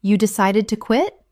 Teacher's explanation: Utilizing a rising intonation. This invites them to elaborate on their reasons.